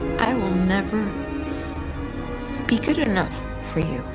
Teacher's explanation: In this sentence, Mirabel uses a very strong full rise tone. Notice how Mirabel tone drops at the beginning of the sentence, reflecting deep sadness and disappointment. A bitter acceptance of her feelings. · In this sentence, uses a very strong full rise tone.